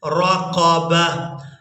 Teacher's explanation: اب یہاں پر آپ لوگ علامات وقف دیکھ رہے ہیں، وقف کریں گے تو وقف کی صورت میں اس ایک آنکھ والی تا کو ہا میں بدلیں گے اور ساکن ادا کریں گے، با کو اس ہا ساکن کے ساتھ ملائیں گے۔